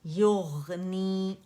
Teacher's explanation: غین موٹا ہے، اس میں رخاوہ بھی ہے، اور یا باریک ہے